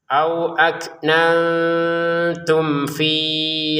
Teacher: Mim sukun bertemu fa dibaca dengan jelas. · fin-nya di sini panjang dua harakat kalau belum gabung sama hamzah